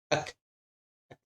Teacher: Nafasnya berjalan tapi suaranya terpotong. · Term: sifat hams